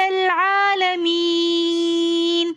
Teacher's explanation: یا مدہ کے بعد آگے نون ساکن آ رہا ہے، تو حالت وقف میں اس کو تھوڑا سا زیادہ کھینچ کر پڑھیں گے